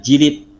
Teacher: ada penambahan vokal i di dalamnya